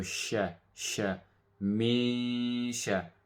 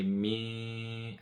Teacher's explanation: So we half the noon, mi. Instead of saying min, we say mi, and then we bring it from the nose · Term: ikhfa